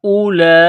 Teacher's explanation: ہا کے اوپر مد ہے، اس کو تھوڑا سا کھینچیں گے۔ ہؤلاء، یہ لمبی مد ہے، 4 الف کے برابر کھینچیں گے